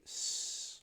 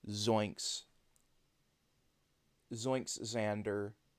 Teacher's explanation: back and put your fingers up against your Adam's apple and say s like the snake went South you'll find that it doesn't vibrate a huge amount whereas if you say zoinks zoinks Xander it'll vibrate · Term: voiced versus unvoiced